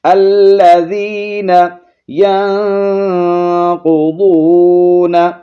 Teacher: نون ساکن کے بعد قوف ہے، اخفا ہوگا، آواز کو ناک میں چھپائیں گے. ینقضون، قوف اور ضاد کو موٹا، واو حرف مدہ ہے، ایک الف کی مقدار کھینچیں گے.